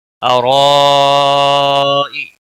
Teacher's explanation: را زبر کی وجہ سے پور پڑا جائے گا، مد متصل ہے، بڑی مد 5 الف کے برابر کھینچ کر پڑھیں گے، کی کو کھینچنا نہیں۔